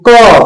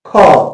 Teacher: क में कम वायु निकलती है जबकि ख में जो है मुंह से अधिक वायु निकलती है